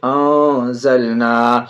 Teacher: نون علی زبر نا، انزلنا، انزلنا. نون ساکن کے بعد زا حرف اخفا میں سے ناک میں آواز چھپا کے پڑھیں گے